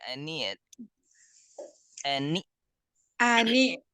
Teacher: Ani Hamzah tertahan jangan ngalir